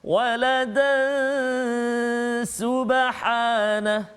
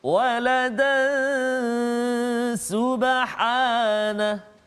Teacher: Walada, dengan 2 harakat kita berhenti, kita waqaf. Tetapi kalau kita sambung bacaan kita, maka dekat situ dia berlaku tanwin bertemu dengan sin, iaitu ikhfa hakiki, dengung 2 harakat bacaan dia.